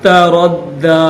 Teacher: دال کے اوپر کھڑا زبر ہے، ایک الف کی لمٹ میں کھینچیں گے، اور تشدید بھی ہے تو دبا کر اس کو پڑھیں گے